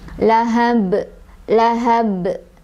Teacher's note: pantulannya besar karena qolqolah kubro ya besar, jadi lahab, lahab gitu ya.